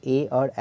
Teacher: कंठ तालु में जीभ का स्पर्श होता है, इससे जो वर्ण बोला जाता है वो कंठ तालव्य वर्ण कहलाता है। इससे ए और ए बोला जाता है।